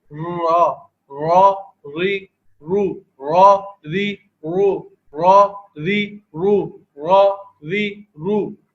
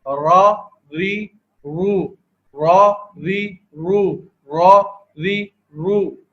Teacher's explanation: اس کی ادائیگی کو بھی دیکھ لیتے ہیں کہ دیکھیں زبان کا سرا، جو زبان کا سرا ہے وہ اوپر کے جو مسوڑے ہیں سامنے کی طرف کے، ان کے اوپر لگنے سے را کی ادائیگی ہو رہی ہے